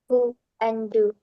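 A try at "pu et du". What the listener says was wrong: No. You said poo and do, and it's p and d.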